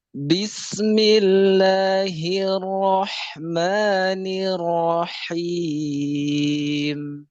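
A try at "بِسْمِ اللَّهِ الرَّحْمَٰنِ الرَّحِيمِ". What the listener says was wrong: Nah, sininn-nya agak lebih mengalir sedikit lagi.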